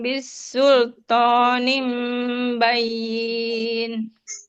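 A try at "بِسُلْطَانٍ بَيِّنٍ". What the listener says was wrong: Jangan dipanjangin bayin la.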